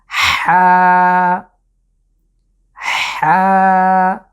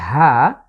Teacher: কণ্ঠের মাঝখান থেকে একটু কঠিনভাবে আমরা কণ্ঠের উপর চাপ দিয়ে আমরা এটাকে উচ্চারণ করব।